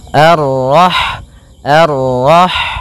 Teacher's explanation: Dan sifat ha itu yang paling mencolok adalah sifat hamnya yaitu mengalirnya nafas ketika kita membacanya. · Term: sifat hamesnya